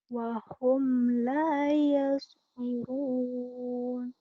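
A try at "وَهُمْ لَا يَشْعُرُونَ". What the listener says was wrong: ya shin-nya kurang keluar lagi.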